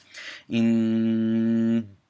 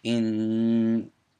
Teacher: all the air is coming out of your nose when you're doing this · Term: ghunna